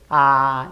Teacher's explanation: Pero en A, la lengua se baja a su punto más bajo. Entonces, la A se pronuncia solamente con el hecho de abrir la boca. La lengua no se mueve.